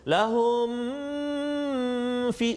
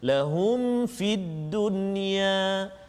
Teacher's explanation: Dan juga satu lagi pada kalimah lahum fid dunya, juga ayat 114, lahum fid dunya tu mim mati bertemu dengan fa, izhar syafawi, jadi kita tak boleh dengung kat situ